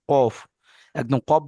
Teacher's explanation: কফ আর কাফ এ দুটো বলা হয় তোমার এই যে জিহব্বার গোড়া, সিবারা, জিহব্বার গোড়া ওই বরাবর উপরের তালুর সঙ্গে লাগিয়ে কফ উচ্চারিত হয়, কফ, একদম কফ বলছেন দেখেন, জিহ্বার গোড়াটা একদম ওই বরাবর উপরের তালুতে টাচ হচ্ছে, ঠিক আছে, একে বলা হয় কফ।